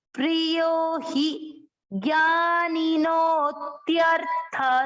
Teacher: नो की मात्रा को लंबा खींचना है, अवग्रह का मतलब ज्ञानी नो।